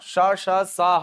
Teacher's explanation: ये ऐसे व्यंजन है जिनका उच्चारण करते समय वायु का जिह्वा से संघर्ष होगा, और इसी संघर्ष के परिणाम स्वरूप उष्मा उत्पन्न होती है। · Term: ऊष्मा, उष्म व्यंजन